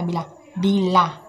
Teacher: Pertama, bunyi vokoid atau vokal. Misal, bunyi I dengan ciri tinggi depan tak bulat pada kata bila.